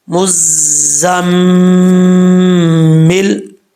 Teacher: میم کے اوپر شد ہے تو 1 الف کی مقدار اس کو غنہ بھی کریں گے